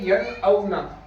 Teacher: نون ساکن کے بعد میں یہ حمزہ ہے اور حمزہ نکلتا ہے حلق سے. تو ہم اس کو پڑھیں گے ین او نا, بغیر غنہ کرے پڑھیں گے ین او نا. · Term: غنہ نہیں